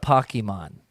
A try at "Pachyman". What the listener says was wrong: no there's a CH in there